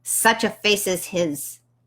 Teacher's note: The S is Z's a little bit. It's very, very fricative.